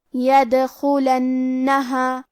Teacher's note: ہمیں دال کو قلقلہ سے پڑھنا ہے اور قلقلہ کا معنی ہے حرف ساکن کو ہلانا. لہذا ہم دال کو ہلاتے ہوئے یہ کلمہ کو پڑھیں گے.